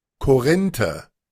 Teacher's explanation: Ahí está la R, la R uvular. O sea, la R allí está en medio, suena, ¿vea?